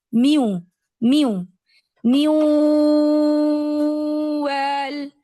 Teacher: میم زیر می پڑھ کے میں ہوٹوں کو بالکل واو کی طرح راؤنڈ کر دیتی ہوں، جیسے واو کی ادائیگی کے لیے ہم راؤنڈ کرتے ہیں.